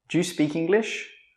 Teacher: We don't say 'do you'. We say 'dju'.